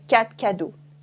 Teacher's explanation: In spoken French, very often we're not going to say the R at the end. So for example, instead of saying quatre cadeaux, I would say quatre cadeaux.